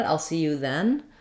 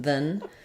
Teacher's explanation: for conversational speech they both tend to get a reduced vowel